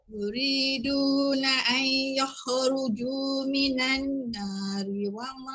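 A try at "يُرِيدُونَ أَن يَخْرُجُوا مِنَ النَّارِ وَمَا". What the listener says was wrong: Yang wajib unah tu lambat sikit. Bunyi dia mudah ada, cuma dia punya harakat kurang. Lambat sikit, tekan dulu.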